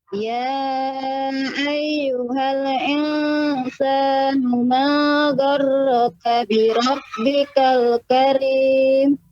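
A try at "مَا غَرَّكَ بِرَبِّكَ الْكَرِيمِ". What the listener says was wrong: Gha-nya lebih ditepatkan lagi pembacaannya pada makhrajnya. Gha. Ma gharraka bi rabbikal karim.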